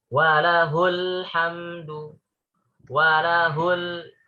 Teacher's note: hul jadi pendek ya. Karena setelahnya ada huruf yang sukun ya. Walahul, ada lam sukun ya.